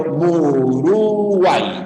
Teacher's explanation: Las cerradas están en los costados y la abierta en el centro y la abierta siempre tendrá la fuerza de voz la abierta Siempre será la tónica ya siempre con fuerza de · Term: triptongo